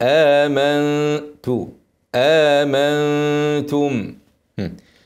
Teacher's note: ميم ساكنه بعدها باء اخفاء شفوي